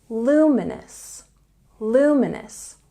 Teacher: That's fine, but it's even better if you say luminous. There's a stress on the first syllable.